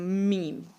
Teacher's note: बा में जो था, बा के ऊपर वाला हिस्सा जब हम टच करते थे होंठ का तो अदा होता था बा। और मीम जो है वो हम दोनों होंठों को मिला देते हैं और एक गुन्ना सा करते हैं